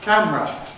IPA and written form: ˈkæmrə (camera)